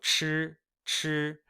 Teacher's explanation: It's like a CH, but you are curling your tongue up.